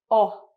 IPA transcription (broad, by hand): ɒ